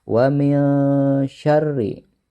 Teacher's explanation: nun sukun bertemu dengan huruf shin. Maka cara membacanya harus samar atau disebut juga dengan ikhfa.